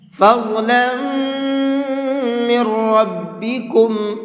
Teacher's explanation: فض کے اندر ضاد کو منہ بھر کے پڑھیں گے، فض نہیں پڑھنا ہے بلکہ فض پڑھنا ہے۔